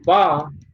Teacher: i am taking the help of two lips to make the sound ba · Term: consonant sound